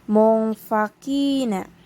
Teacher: Terdapat hukum tajwid ikhfah karena terdapat nun mati atau nun berharokat sukun yang bertemu dengan huruf fa, sehingga cara membacanya pun disamar dengan dengung. Akan tetapi untuk cara bacanya ini dengungnya itu masih disamarkan atau masih agak disembunyikan.